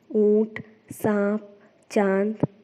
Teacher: चंद्रबिंदु की मात्रा शब्द के ऊपर लगती है। इसका उच्चारण नाक और मुंह से किया जाता है। चंद्रबिंदु वाले कुछ शब्द हैं ऊंट, सांप, चांद आदि। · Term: अनुनासिक